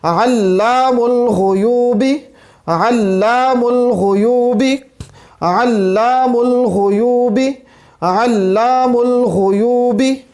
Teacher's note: عین ہے اور یہ وسط حلق سے ادا ہوتا ہے